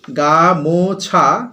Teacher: মাঝখানে যে ম আছে সেখানে একটা শ্বাসাঘাত পড়ছে, তার প্রভাবে কি হচ্ছে, ও স্বরধ্বনিটা লুপ্ত হয়ে যাচ্ছে, হচ্ছে গামছা।